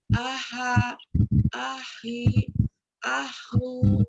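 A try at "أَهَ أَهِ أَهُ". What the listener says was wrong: Nah, Ibu juga masih ada ha-nya. Jangan ha, itu di tengah tenggorokan. Tapi ha. Ha.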